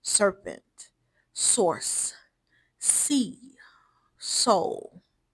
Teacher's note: So the S sound is feminine, flowing, serpentine, and continuous. The sound itself never fully stops. It flows and hisses.